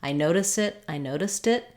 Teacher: when we link to a vowel the T does change back to something that sounds more like a d which is the flap sound